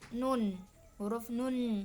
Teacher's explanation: bunyi yang sebagian udaranya keluar dari rongga mulut dan sebagian keluar dari rongga hidung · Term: nasal